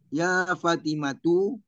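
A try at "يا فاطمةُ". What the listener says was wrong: Fa-nya panjang apa tidak? Nah, kalau gitu jangan Fatimatu. Fa gitu dong. fa-nya panjang jangan Fatimatu. Fati.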